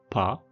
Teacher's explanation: the voiceless bilabial stop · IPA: [p]